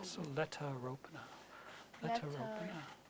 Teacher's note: think of the R being in front of the next vowel